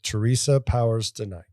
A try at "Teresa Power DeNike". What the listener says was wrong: No S on the Powers. It's not Austin Powers.